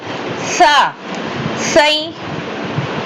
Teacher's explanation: சாவுடைய sound நுனி நாக்குல இருந்து கொண்டு வாங்க